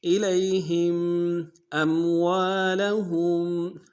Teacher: ہا کو میم ساکن کے سامنے لانا ہے، میم ساکن میں غنہ کریں گے